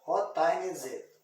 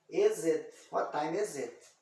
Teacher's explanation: esse I aqui, eu estou pronunciando ele como se fosse um ezinho